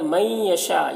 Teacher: من یہاں پر ادغام ناقص ہو رہا ہے، اسے غنہ کے ساتھ پڑھتے ہیں۔ یشاء کے اوپر جو مد ہے، اس مد کو مد متصل کہتے ہیں، اسے 3-4 الف کے برابر کھینچ کر پڑھتے ہیں۔